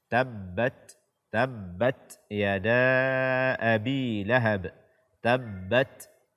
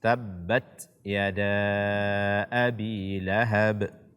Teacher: Kemudian kesalahan kedua kaum muslimin dan muslimat yang dimuliakan oleh Allah Azza wa Jalla, membaca tak sukun tanpa hamas. Karena huruf ta salah satu sifatnya adalah hamas. Ketika kita membacanya disertai dengan aliran napas atau angin.